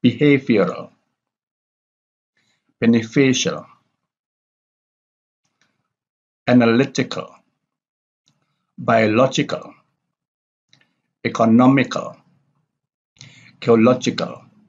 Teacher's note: have the primary stress on the third syllable from the last